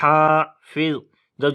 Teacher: ہا کو گلے کے درمیان والے حصے سے پڑھیں گے اور لمبا بھی کریں گے